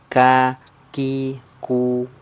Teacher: Kalau kaf dia sedikit ke depan. Ya, sedikit ke depan daripada huruf qaf, menyentuhnya ke langit-langit lunak dan keras.